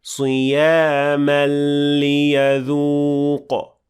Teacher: between the word صِيَامَ and لِيَذُوق, there is idgham kamil without غنة